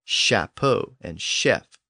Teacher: even though words like shapo and Chef retain the same ch spelling they came into English with their later sh pronunciation